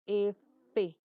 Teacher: El labio inferior se aproximará a los bordes de los incisivos superiores, de los dientes superiores.